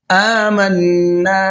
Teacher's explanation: نون کے اوپر تشدید ہے، غنہ بھی کریں گے اور ساتھ ساتھ کھینچ کر کے بھی پڑھنا ہے